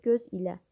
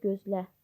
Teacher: İsim kimi işlənirsə göz ilə. Vurğu birinci hecada. Feil kimi işlənərsə gözlə. Vurğu sonda olur.